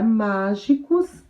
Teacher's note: a palavra mágicos é proparoxítona, porque a sílaba tônica é a antepenúltima